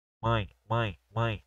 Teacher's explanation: esse m tá fazendo com que a palavra seja uma palavra nasalizada né ou seja pelo nariz ali tá bom é básico que você só precisa entender isso